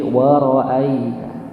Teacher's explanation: Biasa saja. Enggak perlu ada hentakan. Dia termasuk harfun lin ya. Jadi dibaca lembut saja. Wa ra'aitan bukan wa ra'aita.